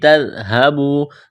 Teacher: ذال کو نرم کرنا ہے، واو مدہ ہے، الف کے برابر کھینچنا ہے